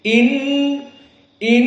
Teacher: Nun musyaddadah wujubul gunah maka dibaca dari kisum dari hidung